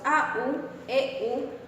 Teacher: u semivocal en los diptongos a u e u se pronuncia una u breve y rápida su articulación se reduce al movimiento que realizan los órganos para